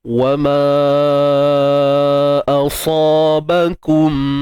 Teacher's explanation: Mat asli ma ni asalnya jumpa dengan hamzah, jadi kadarnya berubah menjadi 4 ataupun 5 harakat. Dan hukum di sini MJM, mat jaiz munfasil.